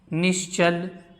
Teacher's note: यहाँ पर विसर्ग के बाद च आ रहा है, तो विसर्ग के स्थान पर क्या हो जाएगा? तालव्य श।